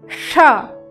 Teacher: घर्षण के साथ हवा निकलती है और ऊष्मा भी पैदा होती है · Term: ऊष्म व्यंजन